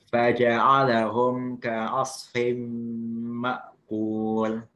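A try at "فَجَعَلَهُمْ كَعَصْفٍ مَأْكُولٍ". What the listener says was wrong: Ya, tapi antum fathahnya masih fa. Lebih dibuka lagi ke samping. Faja'ala. Jangan faja'ala. Jadi antum masih fathahnya masih terlalu agak tebal. Faja'alahum. Bukan faja'alahum ka'asfim ma'kul.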